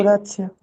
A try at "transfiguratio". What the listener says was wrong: Cuidado que no es transfiguratio, no es la C, es una TS, ¿sí?